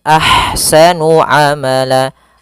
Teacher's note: di sini ada ha yang berharakat sukun maka dinamakan dengan ha hams. Alirkan nafasnya, kemudian baru dibaca dengan sa-nya.